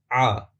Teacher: یہ وہی آواز ہے جو اردو میں بھی استعمال کی جاتی ہے، اور اس کی ادائیگی حلق سے ہوگی۔ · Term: عین